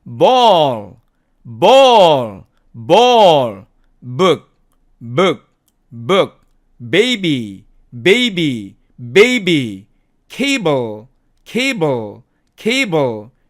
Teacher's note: 그래서 P라고 발음할 때는 우리가 목청을 떨지 않았지만 이 B 발음할 때는 P 할 때하고 똑같이 발음을 하되 목청을 하고 떨어주면은 B 이렇게 발음이 나오는 거죠. 그래서 모든 유성 자음은 그 소리가 나오기 전에 발성기관이 미리 붙어 있어야 되고 그 소리가 나오기 전에 목청이 먼저 떨어야만 합니다.